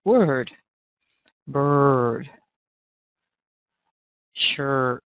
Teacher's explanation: Now, in older English, and maybe even in some particular words in British English, you will hear more of an sound. But in American English, you're going to keep a nice, steady, rounded lips, tongue pulled back.